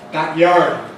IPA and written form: ˈbæk ˈjɑːrd (back yardbackyard)